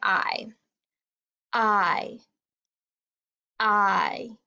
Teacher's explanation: i yep i feel that one in my throat too so both the short sound and the long sound are voiced we can feel them in our throats when we make the sound